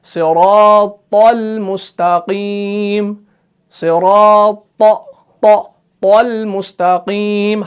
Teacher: طا جو ہے یہ بھی مفخم ہے. اگر آپ نے اس طا کو بھی باریک پڑھ لیا تو تا اور طا میں کوئی فرق نہیں بچے گا.